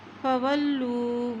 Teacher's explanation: واو کی زبر کو لام کے ساتھ ملائیں گے، لام کے اوپر شد ہے. اسی طرح لام کی پیش کو واو سے ملائیں گے، واو کے اوپر جزم ہے.